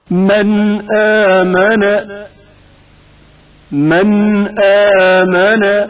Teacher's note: حمزہ سے پہلے نون ساکن کا اظہار